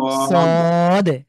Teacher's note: সদে সদ শেষে দাল আছে একটু কলকলা করবো